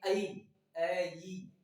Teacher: ए बनता है कंठ से और ई बोला जाता है किससे? तालु से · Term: कंठ तालु